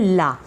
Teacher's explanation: जैसे ही हम उच्चारण करते हैं हिंदी में ला, आप करेंगे तो आप देखेंगे कि आपके मुंह के अंदर दोनों तरफ भाग खिड़की बन गई है, जिससे क्या हुई, ध्वनि जो थी या वायु जो थी वो क्या हुई, बाहर निकल गई, तो ये ला बना, ये पार्श्वर हुआ।